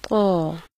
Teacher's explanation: अदायगी के लिए ज़ुबान जड़ से ऊपर को उठा दी जाती है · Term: क़ की आवाज़